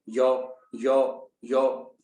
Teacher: य की ध्वनि ऐसा माना जाता है कि तालु से निकलती है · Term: तालव्य